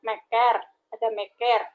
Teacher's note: Lalu untuk K koda ada meker. E di sini, bunyi E di sini merupakan vokal depan. Dan K ini diikuti oleh bunyi E ini, diikuti oleh vokal depan.